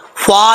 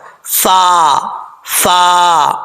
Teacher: اوپر والے دانتوں کا کنارہ نیچے والے ہونٹ کی تری والی جگہ پہ لگے تو فا پڑھا جاتا ہے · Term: فا کا مخرج